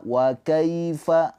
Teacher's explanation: Ingat ya, ini harfulin bukan mad lin. Jadi jangan dipanjangkan. Jadi jangan waaifat jangan ya hanya dilembutkan aja.